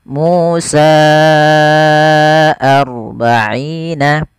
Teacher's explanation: Maka konsep daripada mad jaiz itu, apabila ada mad tabi'i bertemu dengan hamzah dan posisi hamzah pada kata yang lainnya, bukan dalam satu kata, dan di situ kita baca dengan mad jaiz munfasil. Panjangnya adalah 4 harokat atau 5 harokat